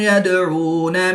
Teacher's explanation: دال حروف کلکلہ میں سے ہے، اور جب حروف کلکلہ ساکن ہو تو ان میں کلکلہ خوب ظاہر ہوگا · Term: کلکلہ صغریٰ